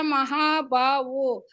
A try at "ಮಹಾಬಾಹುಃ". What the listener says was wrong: ಅಲ್ಲೇ ಅದೇ ಮಹಾಬಾಹುಹು ಅಂತ ಹೇಳಲಿಲ್ಲ